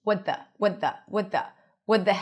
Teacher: tongue is on the the teeth for the t and then you release it for the th.